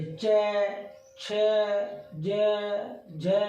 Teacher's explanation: आप इन्हें बोल के देखिए तो ये सारे ऐसे बोलेंगे, च, छ, ज, झ। जो जीभ है, जीभ का जो बीच का भाग है, शुरू का नहीं, बीच का भाग जो दांत के ऊपर का हिस्सा है उससे टकराएगा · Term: तालु